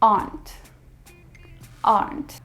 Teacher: in American accent we pronounce the r